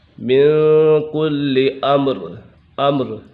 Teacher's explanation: من کل امر، امر اظہار شفوی کا قاعدہ لگ رہا ہے کیونکہ میم سکن کے بعد حرف با اور میم کے علاوہ کوئی بھی حرف آ جائے تو میم سکن میں اظہار شفوی ہوگا، یعنی غنہ نہیں کریں گے